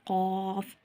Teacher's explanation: क़ाफ में 3 हरूफ आते हैं, लिहाजा 3 अलिफ के बराबर लंबा करेंगे और इसको मोटा पढ़ेंगे · कौफ का मखरेज जुबान की जड़ का आखिरी हिस्सा जिसको कौवा या लहात कहते हैं। ठीक है? कौवा या लहात कहते हैं।